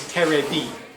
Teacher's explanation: because of not being able to run consonants into each other, the words like television is terebi